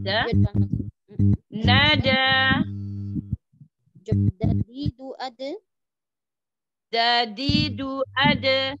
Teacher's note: Di gusi. Enggak di langit-langit dalnya. Di ujung gigi seri. Pangkal gigi seri.